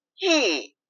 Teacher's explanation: It's a fourth tone, falling.